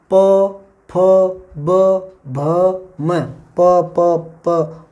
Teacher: ओठों का स्पर्श होता है ना, फिर प्राणवायु निकलती है ना, तो यहाँ से आवाज़ आती है प फ, लास्ट ध्वनि यहाँ से उत्पन्न होती है प फ, तो इनको बोलते हैं ओष्ठ्य वर्ण।